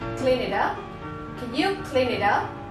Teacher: Rồi câu này mọi người chú ý, nó sẽ nói chỗ này clean, nó sẽ nói với chữ y thôi, nó sẽ tách ra là clean it, chữ t thành chữ d, bởi vì nó đang chữ t đang đứng giữa hai nguyên âm y và u thì chữ t trong dòng Mỹ nó sẽ thành chữ d.